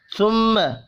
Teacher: ثم میم مشدد پر غنہ کریں گے